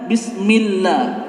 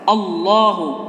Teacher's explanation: Kalau bismillah itu lafzul jalalahnya tarkik, tipis. Kalau ini Allahu adalah tafhim, tebal.